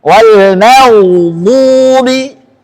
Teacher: Ghain sifatnya rakhawah, mengalir suara.